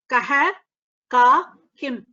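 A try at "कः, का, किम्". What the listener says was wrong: Uttam.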